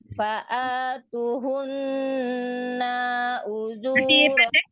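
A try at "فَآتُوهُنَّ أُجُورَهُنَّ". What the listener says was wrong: Ta dhammahnya nanti masih pendek. Harusnya panjang ya. Tunya panjang. Fa'atuhunna. Nunnya jangan dipanjangkan. Hunna'u gitu ya. Fa'atuhunna ujurahun.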